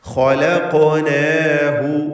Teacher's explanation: ഖാഫിന് ഖൽഖല സുഗ്റ നൽകി ശബ്ദം ചലിപ്പിച്ച് ഉച്ചരിക്കണം. തഫ്ഖീമും നൽകണം.